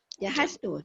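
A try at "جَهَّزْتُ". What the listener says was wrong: Jahaztu. Ada sabdu kan? Jahaztu.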